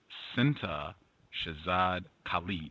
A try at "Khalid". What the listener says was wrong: Close enough. Good. It's good enough. Sintah Khalid, but it's, you don't have the KH is sort of like the Arabic Khalid, but it's okay.